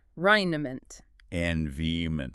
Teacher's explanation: And the rest of the word, the ronment part, sort of gets crushed together. It becomes a schwa sound again.